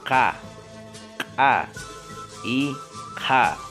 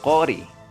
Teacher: el articulador también es el dorso de la lengua y el punto de articulación es el paladar blando, es decir, la región entre la úvula y el paladar duro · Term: consonantes posvelares